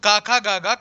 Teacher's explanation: कंठ से बोला जाता है